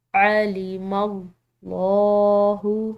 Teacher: یہاں پر لفظ اللہ کی لام موٹی ادا کریں گے کیونکہ پیچھے والے حرف میم کی زبر ہے